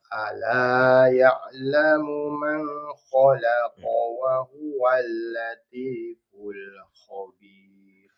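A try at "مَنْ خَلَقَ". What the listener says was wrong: Coba yang man khalaqa jangan didengungkan, karena itu jelas. Man. Man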